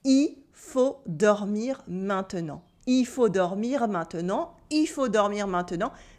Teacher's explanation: Sometimes we don't cut the whole il, but at least we don't pronounce the L at the end of il.